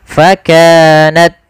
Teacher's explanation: Pada lafal ta sukun, ta memiliki salah satu sifat hamas. Ketika hamasnya ini tampak ketika dia sukun saja, maka jangan terlalu banyak ketika dia berharakat.